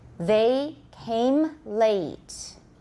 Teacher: make the a longer don't make the m too soon don't don't say the m too soon use the echo they